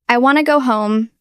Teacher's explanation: In fast speech, want to almost always becomes wanna.